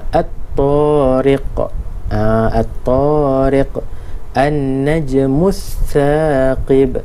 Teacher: Huruf lam ditulis tetapi tidak disebut. Ini maksud Alif Lam Syamsiah ni.